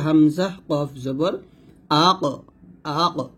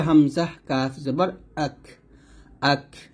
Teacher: থেকে একটু আগে বাড়িয়ে এর মানে হচ্ছে মাঝে একটু ফাঁকা থাকবে কফেরটা একদম লেগে গেছিল আর কাফটা কিন্তু একদম লাগবে না একটু ফাঁকা রেখে উচ্চারণ করতে হবে নরমাল ভাবে পাতলা করে কাফ